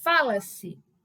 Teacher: Repare que aí nós temos como sílaba tônica o Fá